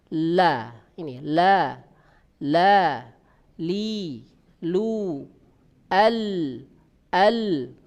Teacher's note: Kuat dia, lam suaranya kuat ya, al kuat seperti itu. Dan dia memiliki sifat tipis, ya, tipis. Jangan kemudian kita tebalkan, salah.